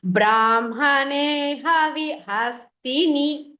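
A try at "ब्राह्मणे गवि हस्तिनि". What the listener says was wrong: கவி கவி சொல்லு, கா சொல்லுங்க. கவி கேக்குறது, ஹா கேக்குறது. கவி.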